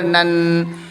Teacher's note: جیسے نون نون زبر نن، پھر نون میں نون مشدد ہوگا، نون مشدد کو ایک الف غنہ کر کے پڑھیں گے